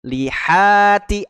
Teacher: tebal dibaca Dua harakatnya ya madii Alif sebelumnya fathah Li ha huruf ha ya punya sifat Hames mengalir udara